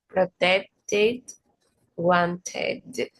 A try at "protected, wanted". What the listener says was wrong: Mm-hmm. Yeah, yeah, very good.